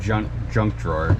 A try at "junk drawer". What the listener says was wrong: You said drunk. Drunk.